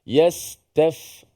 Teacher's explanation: Yastaftu, huruf sin mati, kemudian huruf fa yang mati, ya. Huruf yang hamas, yang udaranya keluar.